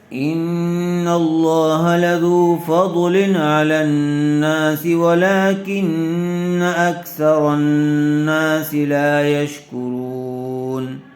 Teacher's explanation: تنوین کے بعد حروف حلقی میں سے عین آیا ہوا ہے، اس لیے بغیر غننے کے جلد اظہار کر کے پڑھیں گے